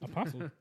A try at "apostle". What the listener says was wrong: But no T. T is silent. An apostle.